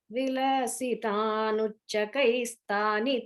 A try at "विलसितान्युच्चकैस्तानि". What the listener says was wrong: Vilasitan Yuchakais. Here is a ya sound there. Vilasitan Yuchakais Tani Tani. அது வந்து விலசித்தானி உச்சகைஸ், அது வந்து ஜாயின் ஆகிறதுனால விலசித்தான் யுச்சகைஸ் ஆயிடுறது.